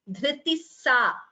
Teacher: Dhritihi followed by sa, visarga followed by sa becomes dhritissa, visarga sakara sandhi